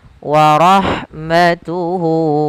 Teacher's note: Atau kalau di sini waw kecil. Maka kita panjangkan hu-nya 2 harokat. · Kemudian pada lafal warahmatuhu, lafal ha ketika dia sukun, maka huruf ha-nya itu dialirkan nafasnya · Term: mad silah qasira